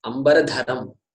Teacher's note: everything is Alpa Prana except Dhakara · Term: Mahaprana